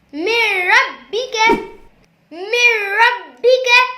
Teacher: اس میں نون ساکن کے بعد را آ رہا ہے، یعنی غنہ نہیں کریں گے کیونکہ را اور لام میں غنہ نہیں کرتے۔ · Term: ادغام